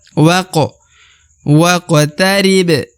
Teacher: karena huruf wa langsung masuk ke huruf Q waqo nah kemudian huruf q berharakat sukun maka dia harus dibaca pantul ya karena huruf Q adalah salah satu dari huruf-huruf Qalqalah huruf